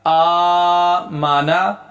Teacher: میم اور نون کا وزن ایک برابر رہے گا، ان کا لیول 1 ہوگا اور کھڑی زبر والے کا لیول وہ بڑھ جائے گا، تو لفظ بنے گا آمانا۔